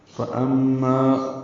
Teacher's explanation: فأما فا کو جلدی سے پڑھیں گے، حمزہ کو میم سے ملائیں گے، میم مشدد پہ غنہ ہوگا، آواز ناک کے بان سے ملے جائیں گے، ما الف مدہ ہے، 2 حرکات لمبا کریں گے.